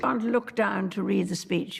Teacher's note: No drop te's here mom. There's a tightness in the jaw. The queen's lips are quite close together and the vowel sounds are articulated at the front of the mouth. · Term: the queen's English